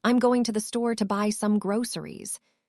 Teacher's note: The stress falls on going. Store, buy, and groceries. The other words are said more quickly and softly. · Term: rhythm and flow